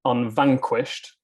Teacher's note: the alliterating letter is the V, even though the word begins with un, because un is an unstressed syllable